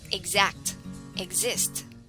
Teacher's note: example xerox box fix when dx is followed by a vowel it is usually pronounced with the sound g and z